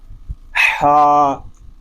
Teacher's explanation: حا حلق کے درمیان والے حصے سے ادا ہوگا